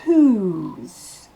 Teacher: Le W ne se prononce pas. Le H est soufflé. Et ensuite, le O se prononce OU. Un OU long.